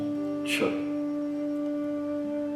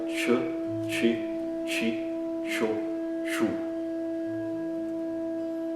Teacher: Se fosse em português C com A, a gente pronunciaria K, mas em sânscrito sempre essa letra que é transliterada como C tem o som Ch. Então é como se fosse um T seguido de CH, mais ou menos esse som, Ch.